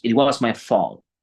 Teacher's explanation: Ni siquiera la T ni la L suenan.